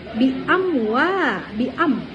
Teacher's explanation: Amnya itu adalah idhar syafawi ya. Dibacanya jelas.